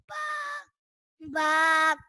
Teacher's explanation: یہ دونوں ہونٹوں کے تر حصے سے ادا ہوتا ہے